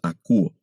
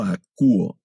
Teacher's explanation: el tema verbal tiene un diptongo que se pronuncia como U. No leemos akouo, sino solo akouo.